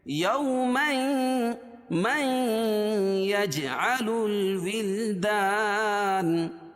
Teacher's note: یوما یجعل الولدان، یوما قاعدہ ہے کہ تنوین کے بعد، یعنی نون ساکن یا تنوین کے بعد، تو یہاں تنوین کے بعد ادغام مع الغنہ کے 4 حرفوں میں سے یا ہے، تو یہاں غنہ کر کے پڑھیں گے